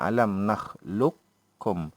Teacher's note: Huruf kaf itu ada baris dhammah dan sehingga menjadi satu huruf yang bertasydid. Kaf itu seolah-olah kaf itu bertasydid dan seolah-olah huruf qaf itu tidak ada kan. Alam nakhluqukum, daripada luqakum jadi lukum. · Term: idgham mutaqaribain